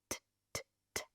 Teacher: To pronounce the T, the tip of the tongue goes up to touch the upper palate, right? T, t, t.